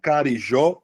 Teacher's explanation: Carijó tem a sílaba tônica no final.